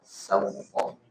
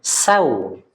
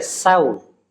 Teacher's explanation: Jadi huruf waw itu punya sifat lin. Sawta. Jadi lembut ya, sawta.